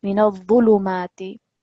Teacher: So a lot more emphasis on that nun mushaddad over there. And again, emphasis here on the za because of the shadda. And again, za, remember, is our thick letter.